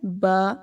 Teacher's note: با جو ہے وہ دونوں ہونٹوں کو ملا کر پڑھنا ہے، با۔ طا موٹا پڑھنا ہے اور تا کو باریک پڑھنا ہے، طا۔